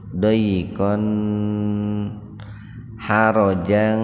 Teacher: fathatain ketemu ha secara terpisah, jadi dibacanya jelas di tenggorokan. Itu alifnya diabaikan saja. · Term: idhar khalqi